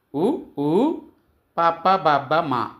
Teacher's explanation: ఓష్ట్యములు అనగా పెదవల నుండి పుట్టినవి